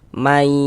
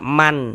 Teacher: Bunyi nun sukunnya masuk dia ke huruf ya. May kemudian dighunahkan atau didengungkan.